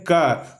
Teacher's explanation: क में तो क हम लोग बोल ही रहे हैं, साथ ही साथ इसमें अ भी बोला जा रहा है, यानी कि क जोड़ अ हो रहा है।